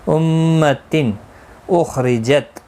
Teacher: خا مستعلیہ ہے، پر پڑھا جائے گا، اس کو ہلانا نہیں، را زیر کی وجہ سے باریک پڑھا جائے گا